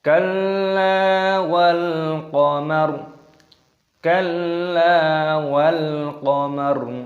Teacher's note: Lam alif, lamnya ini ditasdid dulu baru dipanjangkan matnya